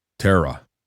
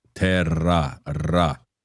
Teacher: when you have two R's together, it's more of a rolling R sound.